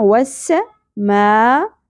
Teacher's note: لہصر وسماء سین سیٹی کے ساتھ زبر زیادہ نہیں کھینچنا وسماء یہاں پہ مد متصل ہوگا پانچ الف کے برابر کھینچنا ہے حمزہ کی زیر کو شارٹ رکھنا ہے وسماء ذال نرمی سے · مد متصل ہوگا, 5 الف کے برابر کھینچنا ہے, حمزہ کی زیر کو شارٹ رکھنا ہے